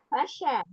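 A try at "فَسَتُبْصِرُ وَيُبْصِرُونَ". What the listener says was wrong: Fasa, pakai sin tipis. Fasa tu basiru wa yubasirun.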